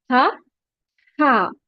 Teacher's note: वसतुल हलक, middle of the throat, pronounce from the middle part of the throat.